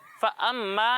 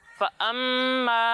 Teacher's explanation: मीम में एक अलिफ की मिकदार तक गुन्ना करना है, फ़अम्मा नहीं, फ़अम्मा, ठीक है।